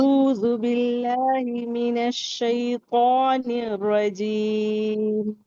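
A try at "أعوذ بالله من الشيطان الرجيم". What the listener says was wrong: रजीम के रा को मोटा करो।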